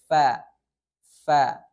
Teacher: Makhorijul huruf fa, yakninya adalah ujung gigi seri atas menyentuh badan bibir bagian bawah.